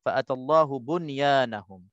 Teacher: perkataan bunyan juga kita baca tanpa dengung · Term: izhar mutlaq